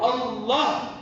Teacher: ஏன்னா அப்படிப்பட்ட மகத்துவமான அல்லாஹ்வினுடைய உள்ளமையை குறித்து சொல்லக்கூடிய வார்த்தைதான் அல்லாஹ். அதனால்தான் அல்லாஹ்வுடைய லா சொல்லும்போது நீங்க அதை வல்லினமாக சொல்ல வேண்டும்